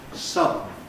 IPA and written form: ˈsʌdn̩ (sudden)